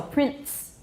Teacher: We get a homorganic voiceless stop. · T is homorganic with the N sound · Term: epenthetic stop